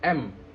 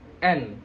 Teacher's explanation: Kalau M mulutnya mingkem, kalau N agak mangap.